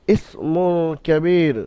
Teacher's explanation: মু শব্দটা এক আলিফ পরিমাণ গুণনা সহ পড়তে হবে। কাফের উপর জাবার হারাকাত তাড়াতাড়ি পড়তে হবে। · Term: হরফে ইকফার কায়দা